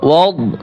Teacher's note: মুখ গোল মানে জিহ্বার মধ্যখান উপরে তুলতে হবে যাতে মোটা হয়, দত হরফ মোটা হবে কিন্তু কলকলা হবে না।